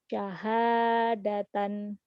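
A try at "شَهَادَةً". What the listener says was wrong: Shin. Kedengarannya bukan sahadatan. Yuk, ulang lagi.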